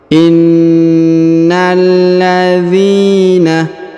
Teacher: Huruf na langsung sambung masuk ke huruf lam alif lam qamariyah ya, yang berharokat tasdid.